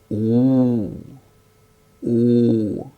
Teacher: when we utter ooh that is the back portion of the tongue goes up